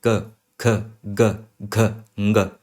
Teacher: तो अगर आप अपने कंठ के ऊपर हाथ रखेंगे और फिर इन पांचों को बोलेंगे क, ख, ग, घ, ङ, तो आपको पता चलेगा कि ये पांचों ही व्यंजन आपके कंठ के रीजन से आते हैं